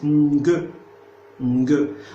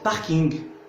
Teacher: En fait, c'est pas ING, il faut faire attention, c'est pas ING, c'est NG. C'est une vélaire nasale